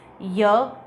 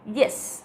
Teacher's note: इसमें टंग का front portion hard palate को टच करता है। Tongue is the active articulator and hard palate is the passive articulator.